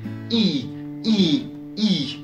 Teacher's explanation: il est plutôt fermé, comme type, car quand on regarde la bouche quand on le prononce elle est quasiment fermée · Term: le i long